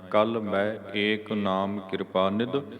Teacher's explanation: ਇਸ ਦਾ ਉਚਾਰਨ ਬਿੰਦੀ ਰਹਿਤ ਕਰਨਾ ਹੈ। ਆਪਾਂ ਮੈਂ ਐਦਾਂ ਉਚਾਰਨ ਕਰਨਾ ਆ, ਨੱਕ 'ਚੋਂ ਨਹੀਂ ਬੋਲਣਾ। ਕੋਸ਼ਿਸ਼ ਕਰੀਏ ਵੀ ਨੱਕ ਬੰਦ ਹੋਵੇ ਤੇ ਫਿਰ ਮੰਮੇ ਦਲਾਈਆਂ ਮੈਂ ਬੋਲੀਏ, ਤੇ ਫਿਰ ਇਹਦਾ ਸ਼ੁੱਧ ਉਚਾਰਨ ਹੋਣਾ ਆ।